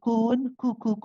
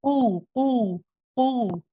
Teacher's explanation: The qaf is your heavy letter, the one where your back of the tongue, remember this is the soft palate. So we don't say kun, ku, ku, ku, we say ku, ku, ku, further back.